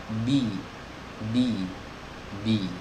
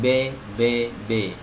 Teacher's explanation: lidah tengahnya naik sedikit saja, itu untuk menyempurnakan kasroh